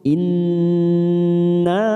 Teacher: Nun yang bertasdid, ada nun yang bertasdid di sini namanya bacaan gunnah musaddadah, kita tekan 3 ketuk